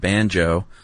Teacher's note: the word banjo is a stressed syllable followed by an unstressed syllable. That's a trochee.